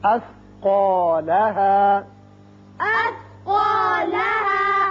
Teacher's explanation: ہا زبر الف ہا وقت کی صورت میں بھی اور ملانے کی صورت میں بھی اسی طرح پڑھا جائے گا, لیکن ایک الف سے زیادہ لمبا نہ کریں